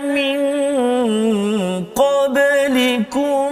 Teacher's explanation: satu hukum nun mati bertemu dengan qaf, iaitulah ikhfa hakiki pada kalimah min qablikum